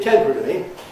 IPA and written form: ˋtemprəli (temporarily)